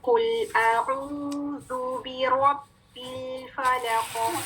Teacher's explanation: جی, قاف کے نیچے کسرہ ہے لیکن ہم نے قاف کو ساکن کیا ہے. جب قاف کو ہم ساکن کریں گے تو آواز پلٹے گی, آواز باؤنس بیک کرے گی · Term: کلکلا